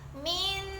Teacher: nunnya tetap dihurufkan jadi Nun menjadi Nun tidak didengung